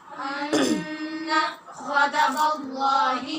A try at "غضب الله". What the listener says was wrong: غدا نہیں غضب غضب اللہ